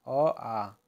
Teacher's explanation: कंठ स्वर है अ और आ कंठ से आते हैं